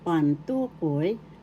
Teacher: Second syllable is the accent, so that's how you pronounce it.